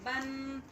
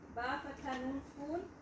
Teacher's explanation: Izhar mean Clear sound. Clear sound. The sound of noon would be clear.